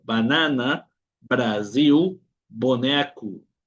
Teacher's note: La letra B, el sonido es igual que en español, hace un sonido labial.